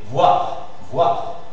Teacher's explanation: c'est la semi-voyelle de OU, après le A. Et après, le R.